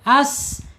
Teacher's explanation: ada suara desisan karena tekanan yang sangat kuat ya sehingga udaranya mengalir tertahan as ya jadi ada suara seperti burung atau angsa ya menurut ee ilmu tajwid ya. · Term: shofir, sofir